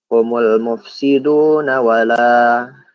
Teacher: Nah, la di sini mad tabi'i ya. Karena panjang 2 harokat.